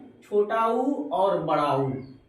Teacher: तो विवृत मुखी में ये होता है कि स्वरों का उच्चारण में ओठ गोलाकार हो जाता है। यानी जो स्वर का उच्चारण करेंगे उसमें ओठ हो जाएगा आपका गोला।